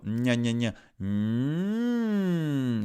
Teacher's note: ça va dans le nez, la bouche ouverte, mais dans le nez.